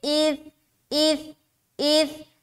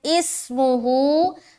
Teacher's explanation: کیونکہ اس جو ہے نا ایسا پڑھنا، وہ گویا کہ یہاں پر سا نہیں بلکہ سین ہے، تو اِسْمُهُ نہیں پڑھنا، اِث بغیر سیٹی کے نکالنا ہے سا کو